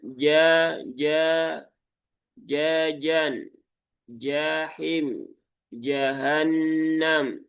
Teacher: yang tepat adalah huruf jim itu keluar dari tengah lidah langit-langit atas.